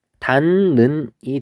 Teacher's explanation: 디귿하고 니은이 만났을 때 뭐로 바뀌냐면 니은하고 니은으로 바뀌는 것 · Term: 비음화